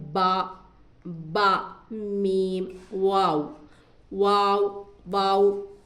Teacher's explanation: बा होठों के नर्म हिस्से से मीम खुश्क हिस्से से और वा जबक य मद्दा ना हो तो दरमियानी हिस्से से